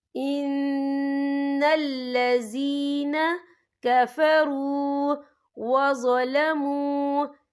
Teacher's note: یہاں پہ یا مدہ ہو رہا ہے، یا ساکن ہے، یا ساکن سے پہلے زیر ہے، تو ہم یہاں 2 یا 3 حرکت کے برابر کھینچیں گے